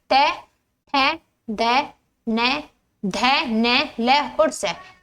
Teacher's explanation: इनके उच्चारण जीवा दांतों में लगती है। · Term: दंत्य